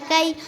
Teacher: یا لین کو نرم آواز کے ساتھ جلد ادا کرے